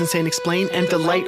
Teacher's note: And I am is two syllables, unstressed, stress, which the words insane explain and delight all express